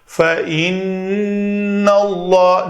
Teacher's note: نون کے اوپر غنہ کریں گے کیونکہ نون اور میم جب بھی مشدد آئیں اس کے اوپر غنہ کیا جاتا ہے